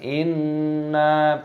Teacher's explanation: hukumnya dibaca hunnah berdengung Jadi dimasukkan apa namanya ditekan lalu didengungkan Inna dan panjangkannya ada tanda alifnya Mad Thobi'i panjangkan dua ketukan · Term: gunnah berdengung